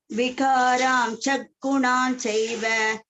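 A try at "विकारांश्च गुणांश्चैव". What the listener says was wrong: Gunamschaiva. Chaiva. Sha cha both are there. Gunamschaiva.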